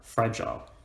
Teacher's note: Or the word fragile, we stress the fra, and we don't stress the gile